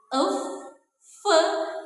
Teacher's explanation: Nah, bunyi frekar ini adalah bunyi ya yang dihasilkan nih tadi melalui bibir bawah dan juga gigi atas. Tetapi aliran udaranya itu dia keluar melalui celah sempit antara bibir bawah dan juga gigi atas sehingga menimbulkan sebuah gesekan · Artinya bunyi labiodental ini merupakan bunyi bahasa yang dihasilkan melalui pertemuan antara bibir bawah sebagai artikulator aktif bertemu dengan gigi atas sebagai titik artikulasi atau artikulator fasif. Nah, bunyi yang dihasilkan adalah bunyi fe, dan juga bunyi tebak nih, Teman-teman. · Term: bunyi frikatif